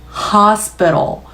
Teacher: 약한 바로 뒤에 dark L, 얘를 호흡이랑 같이 얹으시면 hospital, P 소리만 터트리기 힘드니까 된 소리 된 소리 넘기시고 이 T 소리마저도 랄랄라 flap 리을로 굴리시면 공기를 멈출 이유가 없겠죠. hospital 공기가 바닥으로 할 때 가장 강하게 나오고요.